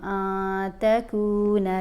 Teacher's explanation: نون کے اوپر ہم نے اخفا کرنا ہے، کیونکہ نون ساکن کے بعد تا ہے